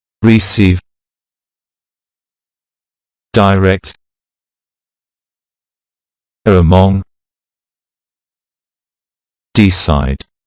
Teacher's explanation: the stress is usually on the second syllable